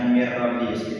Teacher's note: Jadi bacanya mir robbi, seolah-olah nun matinya itu tidak kebaca, bacanya itu mir robbi. Jadi anggap aja nun matinya itu nggak ada, kita baca rohnya aja, tapi dengan berdengung. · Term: idgham bilauna